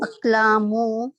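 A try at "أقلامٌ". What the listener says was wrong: نہیں ناٹ مو. پتہ کیوں مو کیوں نہیں ہے؟ ہاں 2 لیٹر ہونے چاہیے نا. الف کے بعد 2 لیٹر ہونے چاہیے نا. ایک ہی لیٹر آ رہا ہے.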